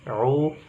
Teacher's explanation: ain karena dia dhammah maka dimonyongkan u